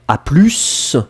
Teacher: vous allez plutôt dire à plus, et on prononce le S final